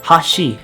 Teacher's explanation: pronouncing Hashi in the sense that you want it to mean Chopsticks you go from a high to low pitch pattern so basically it might sound something like Hashi in contrast when · when you say the word Hashi and you intend to mean Bridge you might sound more like Hashi because it goes from a low pitch accent to a high pitch accent